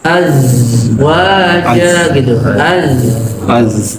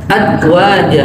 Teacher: Zal enggak punya sifat safir, sedangkan zai punya sifat safir.